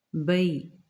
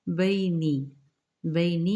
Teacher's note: فلما الف مدہ کا قاعدہ، بلغا بلغا یہاں پہ بھی الف مدہ کا قاعدہ، پہلے والی حرکات دونوں ہیں، بلغا مجمع مج جیم پر جزم قلقلہ ہوگا، تھوڑا نمایاں پڑھیں گے، آ نہیں کرنا، ما بئی با یا ساکنہ سے پہلے زبر ہے، یہاں پہ لین کا قاعدہ ہے